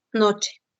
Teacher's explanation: le conoce como un sonido africado palatal sordo